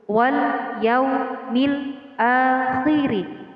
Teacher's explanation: Man amana billahi wal yaumil akhir terdapat 2 hukum alif lam di sini sama-sama alif lam qamariyah wal yaumil akhir yang ditandai dengan tanda sukun. Alif lam qamariyah di sini dibaca dengan jelas atau izhar. Alif lamnya jelas dibaca sukun.